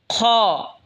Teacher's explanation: খ হলকের শেষ ভাগ হয়তো উচ্চারণ হবে খ